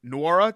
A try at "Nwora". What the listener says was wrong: Is it just Nwora? N is silent. It's just Nwora, isn't it? You said Nwora. No N. It's just Nwora. Like Nwora. Just Nwora.